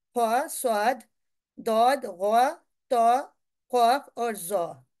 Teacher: इनकी अदायगी में जबान की जड़ ऊपर तालू की तरफ उठती है, और आवाज कुछ मोटी और भरपूर हो जाती है, यानी भारी हो जाती है। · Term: मुफख्खम